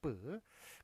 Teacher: 입술 소리와 된 소리, 즉 후두 긴장에 따라서 후두를 긴장을 시켜가지고 내는 게 뿌가 되겠습니다